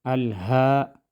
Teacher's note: ہا کو ایک الف کے برابر کھینچ کر پڑھیں گے ، الہاکم التکاثر۔ وصل کی صورت میں ہم تکاثرو پڑھیں گے